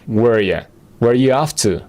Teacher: en conversaciones rápidas y casuales, R va a desaparecer